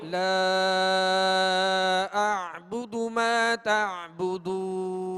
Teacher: آخر میں عین کی جو ہے وہ آواز واضح کریں گے، اس کو جھٹکا نہیں پڑھیں گے بلکہ عین پڑھیں گے